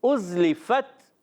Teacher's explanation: تو یہاں پر جو ہے حمزہ کو زا سے ملانا ہے، زا کو سیٹی سے ادا کریں گے، اُزْلِفَت، آخر میں فت آواز آتی ہے، تا تا شدیدہ میں موسیٰ حروف میں سے، سختی کے ساتھ آواز بند ہوتی ہے، پستی اور نرمی سے سانس جاری رہتا ہے، تو آواز آتی ہے ازلفت.